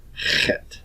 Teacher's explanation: This is a guttural consonant. It is produced in the back of the throat.